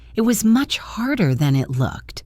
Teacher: The word than is often reduced to thun, and it links to looked. So it sounds like it was much harder than it looked.